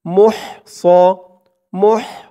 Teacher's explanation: মুহ স, মুহ, মিম দিয়ে হা ধরবে। হার উচ্চারণটা গলার ভিতর থেকে চিকুন হয়ে বের হবে।